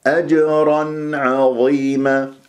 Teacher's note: لازم انت تسمعها ما تقطع صوت النون المظاهره اجرا عظيمه خطا اجرا اجرا عظيما العين مرققه ظاء مفخمه مرتبه